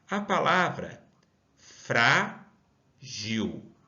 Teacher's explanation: Qual é a sílaba mais forte? É o frá. Sendo assim, não está na última, e sim está na penúltima sílaba.